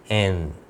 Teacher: ज़बान जो है वो यहाँ आकर दांतों की, ऊपर के दांतों के पीछे ठहरती है, एन। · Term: लिंगुआ डेंटल कॉन्सोनेंट